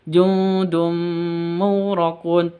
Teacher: tanwin bertemu dengan mim, idgham bi gunnah, masuk didengungkan, masuk ke mim didengungkan.